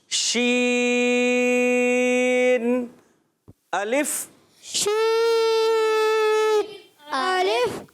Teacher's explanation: شین ادا ہوتا ہے پیارے بچوں اور مدنی چینل کے ناظرین میں بتاتا ہوں. شین ہمارے زبان کے درمیان اور اوپر تالو کے درمیان سے